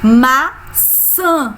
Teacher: Sã é a sílaba mais forte, como é a última, então a maçã é oxítona.